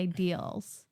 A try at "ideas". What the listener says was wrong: you say ideals, but it's ideas. IDEA. IDEAS. Ideas.